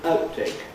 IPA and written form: ˋaʊt̚(unreleased)teɪk (outtake)